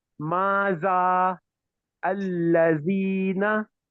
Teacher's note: don't touch the tip of the tongue on the tip of the upper tooth but instead they pronounce Z